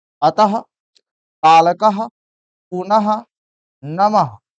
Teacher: इसका उच्चारण ह जैसा पूरा ह नहीं लेकिन ह जैसा होता है। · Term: विसर्ग